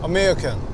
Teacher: he isn't doing the big long a at the end and he's kind of shortening the other vowels